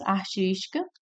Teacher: a sílaba forte é o tis.